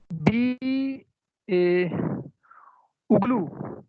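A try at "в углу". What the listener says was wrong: वी नहीं, वुगलू। वी नहीं, वी नहीं, एक साथ पढ़ा जाएगा। वुगलू। वुगलू।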